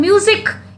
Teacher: in music also za sound is there, though the letter is S but the sound is za, and it is in the middle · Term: z sound